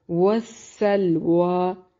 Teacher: وہ کی ادائیگی کے وقت ہونٹوں کو گول کریں گے